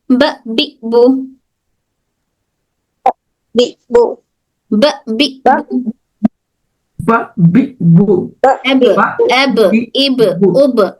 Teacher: ब हमारे होठों के दोनों होठों के गीले वाले हिस्से से अदा होता है।